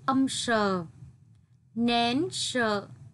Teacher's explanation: tiếng sợ chú ý đọc cong lưỡi